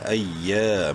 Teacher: حمزہ یا زبر ای، یا الف زبر یا، سختی سے پڑھیں گے، حمزہ کو یا سے ملاتے وقت یا مشدد ہے، اور یا کو الف سے ملاتے وقت ایک الف کے برابر لمبا کریں گے، الف مدہ ہے۔